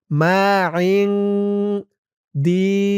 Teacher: ইকফা গুন্না নুন সাকিনের পরে ইকফার হরফ দাল আসছে